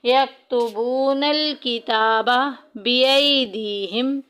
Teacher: बिअयदी में देखें या साकिन पीछे ज़ेर या मद्दा का कायदा जारी हो रहा है, एक अलिफ के बराबर लंबा करेंगे।